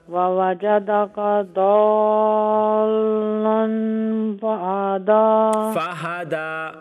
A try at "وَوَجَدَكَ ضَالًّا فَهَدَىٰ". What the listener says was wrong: نہیں ہا کو لمبا نہ کیجئے فہدى ہاں جی